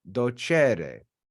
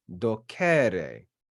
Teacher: The accent is on that E in the infinitive ending because it's long. So because it's long, it's accented in that word.